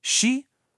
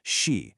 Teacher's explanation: For she, it's a rising second tone. Your voice has to actually go up almost like you're asking a question.